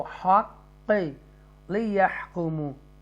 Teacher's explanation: یہاں حق extra stress کر کے اس کو ہم نے پڑھنا ہوگا کیونکہ تشدید لیٹر ہے اور حروف مستعلیہ میں سے بھی ہے، بولڈ لیٹر میں سے بھی.